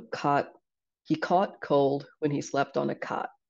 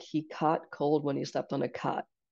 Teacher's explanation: the vowels in cot and caught are coming closer together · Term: merger